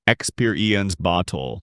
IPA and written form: ɪkˈspɪr.i.əns ˈbɒt̬.əl (Experience Bottle)